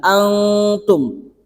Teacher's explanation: Itu hukumnya adalah ikhfa hakiki. Ikhfa hakiki itu samar ya. Jadi bacaannya itu seakan-akan ada eng-nya, ada ng-nya. Antum. Untuk tahap pemula kita engkan saja, antum.